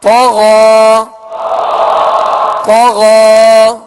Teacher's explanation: اب آپ یہاں دیکھیں گے کہ غین کے ساتھ یا ہے، یہ یا اس میں پڑھی نہیں جائے گی بلکہ غین کے اوپر جو کھڑا زبر ہے یہ الف مدہ کے قائم مقام ہے، لہذا یہاں غین کے اوپر کھڑا زبر پڑھیں گے اور ایک الف کی مقدار کھینچ کر ادا کریں گے۔ یہ رسم الخط کا قاعدہ ہے، اسے کہتے ہیں تماثل فی الرسم۔